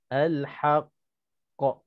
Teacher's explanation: Cara bacaannya ataupun cara qalqalahnya kita lambatkan sikit untuk qalqalahkan qaf itu disebabkan qalqalah itu adanya sabdu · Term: qalqalah akbar